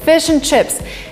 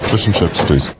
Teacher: the word and is in a weak form